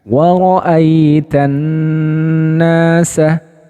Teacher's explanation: Ternyata ketika nunnya ini bertasydid, nah, ya taib, maka ada muncul hukum yang kedua yaitu gunnah musyaddadah. Gunnah atau dengungan yang disebabkan karena tasydid.